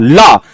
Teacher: लेकिन जीभ के इधर इधर हिस्से से, लेफ्ट एंड राइट से हवा निकल गई। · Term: पार्श्विक व्यंजन